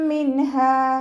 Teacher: നൂൻ സാക്കിനയ്ക്ക് ശേഷം ഇവ്ഹാറിൻ്റെ അക്ഷരമായിട്ടുള്ള ഹംസ ഹ ആണ് വന്നിട്ടുള്ളത്. നൂൻ സാക്കിനയെ വ്യക്തമാക്കി മണിക്കാതെ ഉച്ചരിക്കുക. നൂൻ സാക്കിനക്കോ തെൻവീനിനോ ശേഷം ഹൽക്കിൽ നിന്നും പുറപ്പെടുന്ന തൊണ്ടയിൽ നിന്നും പുറപ്പെടുന്ന 6 അക്ഷരങ്ങളിൽ ഏതെങ്കിലും ഒന്ന് വന്നാൽ നൂൻ സാക്കിനെയും തെൻവീനിനെയും നമ്മൾ വ്യക്തമാക്കി മണിക്കാതെ ഉച്ചരിച്ചു കൊടുക്കുക.